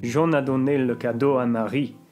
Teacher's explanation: Jean a donné le cadeau à Marie. Jean, né, and do receive a higher accent because these are the syllables at the end of what are considered to be the most important segments of the sentence, whereas the final syllable of the sentence, because this isn't a question, will go down. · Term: tone accent, intonation